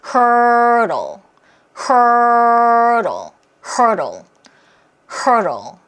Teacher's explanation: 그래서 이 단어는 발음기호를 보면 D 사운드를 중심으로 모음이 있죠? 그래서 이때 D도 편한 리을 사운드가 돼요. hurdle. 뭔가 리을 사운드가 들리죠?